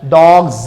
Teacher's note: And if there is vowel sound, voiced sound, which present before this one, and in this way it will be pronounced as dogs, z. So plural s is being pronounced as z